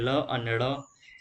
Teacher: પાર્શ્વિક વ્યંજનો કોને કીધા? તો જે વ્યંજનોનો ઉચ્ચારણ કરતી વખતે જીભની બંને બાજુએથી હવા પસાર થાય